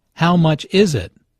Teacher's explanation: Notice that the main sentence stress falls on “is” in this question.